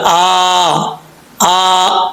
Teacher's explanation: یہاں پر اکثر لوگ مسٹیک کرتے ہیں, حمزہ کے اوپر کھڑا زبر ہے, سٹینڈ زبر, تو اس کو کیسے پڑھیں گے؟ ایک الف کی مقدار لمبا کریں گے. حمزہ سٹینڈ زبر آ, آ.